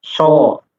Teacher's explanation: bedanya adalah pangkal lisan kita itu terangkat, sementara huruf sin itu tidak. Ya, sa itu tidak terangkat.